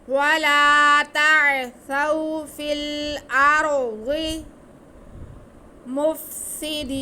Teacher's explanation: ضاد حروف مستعلیہ میں سے اس لیے موٹا کر کے پڑھا جائے گا